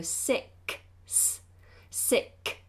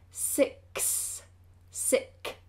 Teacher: the end of that word particularly has a k sound followed by another s sound